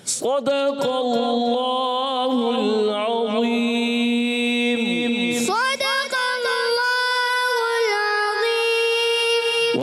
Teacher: صوت کو پر رکھنا ہے، موٹا رکھنا ہے.